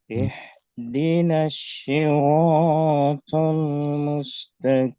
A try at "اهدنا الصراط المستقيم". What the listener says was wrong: Ya, sedikit huruf so, Ustadz Ifkar di sini sudah mendekati huruf sya. Tadi saya dengar ihdinas si seperti membaca huruf sa. Tapi desisnya agak dibesari saja. Ihdinas siratal mustaqim.